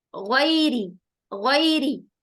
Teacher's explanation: را کے نیچے زیر آ رہی ہے تو ہم را کو باریک کریں گے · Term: را ترقیق